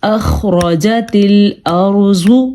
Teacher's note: یہ را بھی ہم نے پر پڑھا ہے کیونکہ میں نے آپ کو بتایا تھا اگر را ساکن ہو تو ہمیں اس کی پیچھے والی لفظ کی حرکت کو دیکھنا ہے۔ یہ را ساکن ہے اور اس سے پیچھے والی حرف پہ زبر ہے تو یہ را پر پڑھا جائے گا